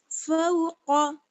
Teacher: اوپر کا نرم تالو اور زبان کی جڑ، زبان کی جڑ اور اوپر کا نرم والا تالو، قاف فوق، فوق. اور قاف جو ہے وہ حروف مستعلیہ میں سے ہے، یعنی موٹا پڑھے جانے والا حروف ہے، اس لیے اس کو پر پڑھیں گے